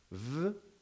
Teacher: Now, let's remember by definition, V is a voiced labiodental fricative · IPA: /v/